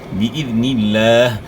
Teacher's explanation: لفظ اللہ کلام سے پہلے والے حرف کے نیچے زیر ہے، تو لفظ اللہ کلام باریک ادا ہوگا، موٹا نہیں پڑھنا